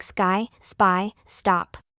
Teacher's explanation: the sound of the English consonant s used as the initial sound of words before a voiceless stop